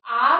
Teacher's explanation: आ को जब हम बोलते हैं तो हमारा मुख पूरी तरह से खुला हुआ होता है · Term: विवृत